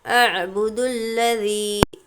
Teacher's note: यहाँ पर हमज़ा आइन ज़बर नरमी के साथ अदा करेंगे। आइन झटका नहीं देना है, नहीं कहना है और ना ही आबुदू पढ़ना है।